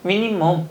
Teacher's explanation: 니은 첨가와 비음화가 된 거